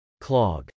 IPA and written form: klˈɑg (clog)